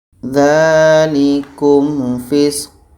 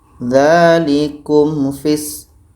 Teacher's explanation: Ko mati di akhir itu hukumnya qalqalah kubro. Jadi kalau berhenti tetap dibaca ko-nya, fisq. Jangan dibaca dzalikum fis.